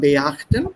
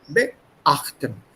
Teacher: So you have to give a very small pause zwischen dem Präfix und dem Hauptverb.